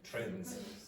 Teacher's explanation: The D disappeared. So you have N, D, Z, trends. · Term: elision